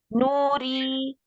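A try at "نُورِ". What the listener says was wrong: Jadi jangan nyamping. Nuri, jangan i, nyamping tapi ke bawah.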